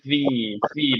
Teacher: বাতাস রিলিজ হবে দাঁত লাগবে ঠোটে